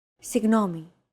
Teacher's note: signomi this character isn't pronounced using English G sound at all it's like a very soft continuous and loosely held G almost as if you're gargling but don't make it sound too throaty